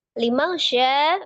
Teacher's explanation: ada nun sukun bertemu dengan huruf shin, ikhfa, hakiki ya. Dibaca dengan samar disertai dengan gunnah yang sempurna.